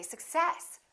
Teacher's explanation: in this case we stress the second part